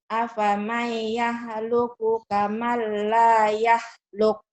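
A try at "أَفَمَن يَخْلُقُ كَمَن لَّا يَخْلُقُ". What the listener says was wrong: Ini bukan ha, kho, kotor dikit. Afamay yakhluqu kamal la yukhluk. Afamay yakhluqu kamal la yakhluk.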